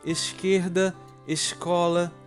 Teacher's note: marcado pelo chamado chiado o som do ch ou x